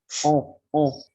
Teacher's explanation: Les voyelles postérieures nasales mi-ouverte arrondie